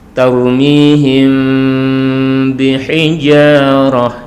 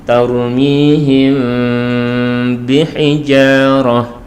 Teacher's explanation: cara membacanya furjah khafifah, ada sedikit rongga, furjah khafifah baina syafatain. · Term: ikhfa syafawi